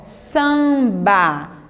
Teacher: você só pronuncia o som do A, um som nasal